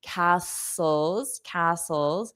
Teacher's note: Notice that pronunciation. The t is silent.